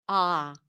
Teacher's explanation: The a as in father is a back open vowel. Ah. The back of the tongue is low.